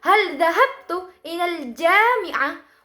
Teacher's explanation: terletak tekanan stres di sini pada suku kata ja dan juga hab dan juga hal. Karena ketika kita disambungkan dengan seluruh ujaran kalimat tersebut, hal dhahabtu ilal jami'ah, maka pengucapannya kita itu berbeda dengan suku kata yang lainnya.